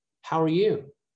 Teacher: It's just how are. It's not are anymore, it's just er.